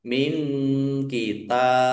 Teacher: Allahnya dibaca tipis karena harokat di depannya kasroh.